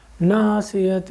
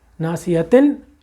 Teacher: اب تن جو ہے اس کی آواز کو اپنے ہونٹوں میں چھپا جائیے اور ناک میں وہ آواز چلی جائے گی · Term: اخفا حقیقی کا غنہ